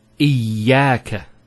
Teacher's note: Notice the ya gets a double vowel because of the shadda there. Iyaka. It's not iyaka.